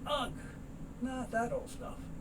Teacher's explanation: The two T's, so you don't hear the first one.